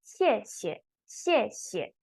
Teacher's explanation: the second character, the one at the back, you pronounce it as neutral tone